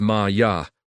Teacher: Maya is Ma-ya, with equal weight on both syllables.